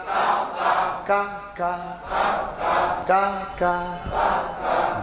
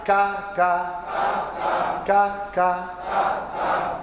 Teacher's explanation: ज़बान की जड़ से थोड़ा आगे बढ़ाकर, उस बराबर ऊपर के, तालु के साथ लगाकर